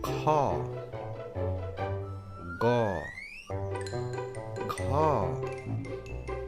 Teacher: এই বর্ণগুলোর উচ্চারণ হবে একদম ভিতর থেকে কণ্ঠ থেকে